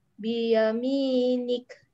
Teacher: waqaf ada hamas. Ya, hamas pada huruf kaf ya